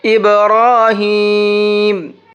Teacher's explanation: را کو موٹا بھی کریں گے اور ساتھ میں کھینچ کر کے بھی پڑھیں گے کیونکہ یہاں پر بھی کھڑا زبر ہے۔